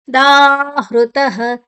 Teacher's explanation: ಯಾಕಂದ್ರೆ ಮುಂದಿನ ಅಕ್ಷರ ತ ಮತ್ತೆ ಯು ಎರಡು ಅಕ್ಷರ ಸೇರಿದೆ, ಸಂಯುಕ್ತಾಕ್ಷರ ಅಂತ ಹೇಳ್ತೇವೆ. ದಾಹೃತಃ ಹ ಮತ್ತೆ ಋ ಹ್ರ ಅಲ್ಲ, ಅದು ಹೃತಃ ತಾದ ನಂತರ ವಿಸರ್ಗದ ಉಚ್ಚಾರಣೆ ಹ.